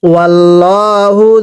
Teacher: পেশের পরে ও সাকিন এক আলিফ টান দিব